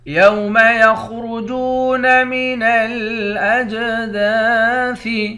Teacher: یوم یخرجون من الاجداث، خا اور را دونوں کو موٹا پڑھیں گے۔ جیم کو واو کے ساتھ ملا کر واو کو ایک الف کے مقدار کھینچیں گے، واو حروف مدہ ہے۔